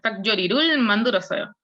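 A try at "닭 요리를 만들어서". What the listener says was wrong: Perfecto.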